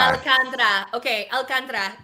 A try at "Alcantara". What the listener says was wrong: You gotta roll those R's. Alcantara.